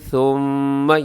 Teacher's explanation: یہاں میم کے اوپر تشدید ہے، یہاں غنہ کریں گے